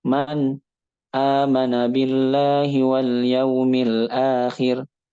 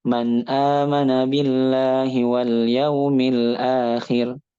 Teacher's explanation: Contoh kita baca izhar tapi pakai sakta.